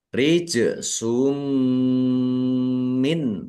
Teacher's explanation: maksudnya langsung masuk ke huruf mim dumah tanwinnya tidak dibaca langsung masuk ke huruf mim dan mendengung ya mendengung mim ditahan biar tampak mendengungnya · Nun sukun bertemu dengan huruf ain bacaan izhar dibaca jelas. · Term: idgham bighunah, idgham bi gunnah